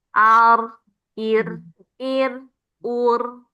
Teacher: yang fathah dan domah itu dibaca tebal ya, dua getaran. Sedangkan yang kasroh garis di bawah itu hanya dibaca satu getaran.